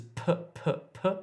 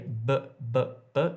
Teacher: p is aspirated, but b is voiced